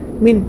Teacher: من میں اظہار ہوگا، نون ساکن کے بعد حروف حلقی میں سے حمزہ ہے تو نون کی آواز کو ظاہر کر کے بغیر غنہ کے جلد پڑھیں گے